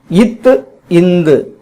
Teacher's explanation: மேல்வாய் பல்லின் அடியை நாக்கின் நுனி பொருந்துவதனால் இவ்வெழுத்துக்கள் தோன்றுகின்றன